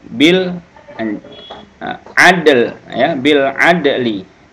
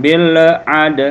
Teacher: yang mati adalah huruf dal tadinya huruf dal ini salah satu huruf qalqalah jadi ini dipantulkan